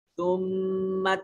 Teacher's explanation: ثم میم مشدد ہے، غنہ واجب ہوگا